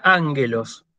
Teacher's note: acento agudo en la antepenúltima